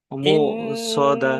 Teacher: ইন্নাহা আলাইহিম মুসাদা মু সদা, এখানে হামজা আছে, আর হামজা যুক্ত সাকিনকে একটু ঝাটকা দিয়ে পড়তে হয়